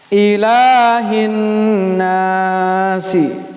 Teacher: Di situ ada idgham dan ta'rif syamsiyah. Alif lamnya tidak terbaca, tapi penulisan harus ada.